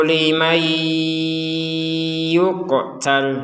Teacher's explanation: Kalau digabungkan maka nun sukunnya dimasukkan ke huruf ya sehingga dibacanya limai, kemudian dengung.